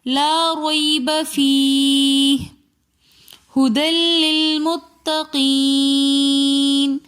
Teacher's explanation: ھدی لل میں 2 زبر کی تنوین کے بعد لام اور را میں سے لام آ رہا ہے، اس لیے ہم نے یہاں پر غنہ نہیں کیا